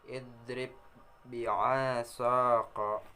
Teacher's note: Huruf ba bersukun bertemu dengan ba berharakat. Kedua huruf ini sama baik makhrajnya maupun sifatnya. Makhrajnya berasal dari asy-syafatain. Sifatnya jar, siddah, istifal, izlaq, dan qalqalah.